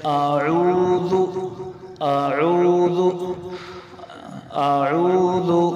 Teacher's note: نرم حرف ہے ذال، اس کو نرمی سے پڑھنا ہے، اس کو زا نہیں پڑھنا